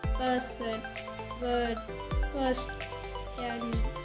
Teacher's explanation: The three-term description of this sound is mid-central unrounded vowel.